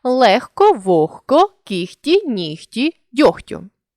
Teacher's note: у вимові дзвінкий г уподібнився до глухого х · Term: уподібнення за глухістю